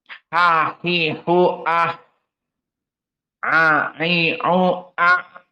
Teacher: dia makhrajnya wastul halq bersamaan dengan Ain · bersamaan dengan Ain ha hi hu ah a i u a Adapun dari sifat ha maka dia masuk kepada hams · makhrajnya adalah alhal dari kerongkongan